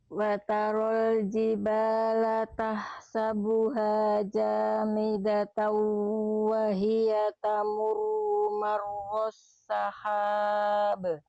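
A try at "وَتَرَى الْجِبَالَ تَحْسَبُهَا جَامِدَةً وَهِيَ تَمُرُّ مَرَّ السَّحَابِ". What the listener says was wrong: Bagus, lanjut.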